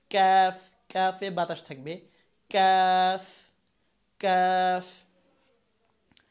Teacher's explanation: ক্যাফ হচ্ছে জিব্বার গোড়া থেকে একটু আগা সামনের দিকে আগাতে হবে এবং তারপর আবার উপরে তালুর সাথে লাগাতে হবে। ক্যাফ, ক্যাফে বাতাস থাকবে।